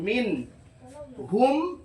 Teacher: নুন সাকিনের পরে এখানে হাটা যেহেতু ইজহারের অক্ষর, অতএব নুনটাকে স্পষ্ট করে পড়তে হবে। · ইজহারে শাফাবি, এখানে গুণনা হবে না।